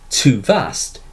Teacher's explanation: too vast is a spondee in which both syllables are stressed, rather than the unstressed, stressed pattern of an iamb.